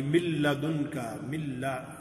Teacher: اور اگر بعد والے 2 حروف لام اور را میں سے کوئی حرف آ جاتا ہے تو نون کی آواز بالکل ختم ہو جائے گی، اگلے حرف کی آواز آئے گی من لدن کا، من لا، نون کے مخرج پر زبان لگنے کی بجائے لام کے مخرج پر آواز لگے گی. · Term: ادغام